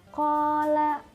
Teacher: terdapat harokat fathah diikuti huruf alif, dibaca panjang 2 harokat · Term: mad tabi'i